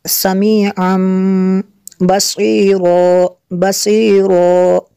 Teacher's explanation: تنوین کا جو نون ساکن ہوتا ہے تو اس کو میم سے بدل کر پڑھتے ہیں